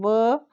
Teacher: केवल व जो है दंत और ओष्ठ के साथ इसका उच्चारण होता है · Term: दंतोष्ठ